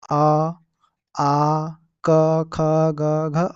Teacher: ये वे वर्ण होते हैं जिनका उच्चारण कंठ से होता है गले से होता है